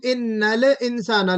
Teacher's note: लाम पे कलकला नहीं होना चाहिए।